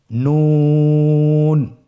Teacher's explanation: একটি নোক্তা যদি থাকে তাহলে আমরা বুঝতে পারবো যে এটা হরফটি হলো নুন। নুন হরফটি উচ্চারণের ক্ষেত্রে অবশ্যই পাতলা করে উচ্চারণ করতে হবে এবং 3 আলিফ টেনে পড়তে হবে